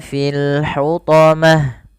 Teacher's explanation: ta marbutah ketika wakaf dimatikan dengan huruf ha